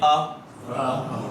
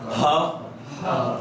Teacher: حلق کا وہ حصہ جو یہ ہنسلی کی ہڈی کے پاس جو ہے نا, یہ والا حصہ, یہاں سے حمزہ ہا آتا ہے